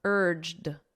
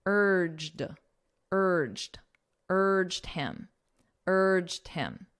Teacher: So it ends on a very soft D sound.